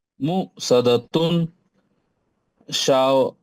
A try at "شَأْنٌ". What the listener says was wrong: جھٹکا دے کے شأنن.